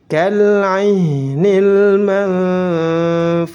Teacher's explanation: nun sukun bertemu dengan fa. Nun sukunnya disamarkan, disebut dengan ikhfa hakiki.